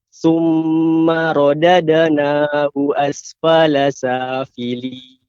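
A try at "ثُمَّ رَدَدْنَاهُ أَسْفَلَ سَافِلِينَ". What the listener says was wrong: Untuk ra ya lebih ditebalkan. Summa rada ra ya, tidak ra. Dia naiknya suara ke langit juga ra tebal, tafkhim. Summa radadna.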